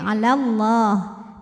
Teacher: ala nah namun dibaca panjang dua harakatnya hanya saat berhenti ala kalau wasal gugur madnya lamnya dibaca pendek